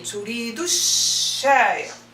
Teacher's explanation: So the u sound will be connected to the shin.